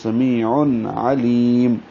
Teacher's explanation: ہے، دو حرکات لمبا کریں گے، عن میں تنوین ہے، اور اس کے بعد عین حروف اظہار میں سے آ رہا ہے اس لیے اظہار ہوگا